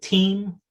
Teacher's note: sometimes it's aspirated